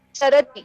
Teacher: ई की मात्रा आए पर ह्रस्व, दीर्घ नहीं